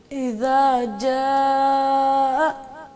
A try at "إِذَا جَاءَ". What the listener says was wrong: جھٹکا نہ دیں، اس کو اکٹھا ملا کے پڑھیں.